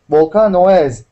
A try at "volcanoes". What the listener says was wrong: Okay, but even when we say potatoes, okay, we wouldn't pronounce that ES sound. Okay, volcano would be the same. All we would say is volcanoes.